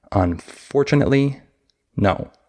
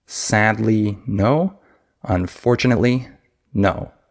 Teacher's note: that amount of time between the for and the no is pretty much the same as the amount of time in the phrase sadly, no. That ly in the word sad has pretty much the same amount of time that we use to say it as the last 3 syllables of unfortunately. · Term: stress-timed language